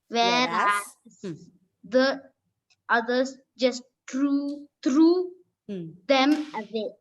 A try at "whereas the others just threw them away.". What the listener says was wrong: Away, yes.